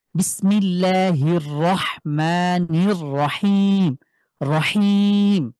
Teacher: রহিম দেখেন আমরা হার উচ্চারণ শিখেছি। তো হার উচ্চারণ কি কণ্ঠের মাঝখান থেকে চাপ দিয়ে